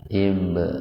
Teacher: Huruf ba mati di tengah-tengah kata. Jadi ba-nya dipantulkan tapi secara ringan. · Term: qalqalah sugro